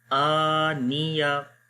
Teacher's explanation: خالی حمزہ کو لمبا کریں گے، نون اور یا دونوں کو نہیں لمبا کریں گے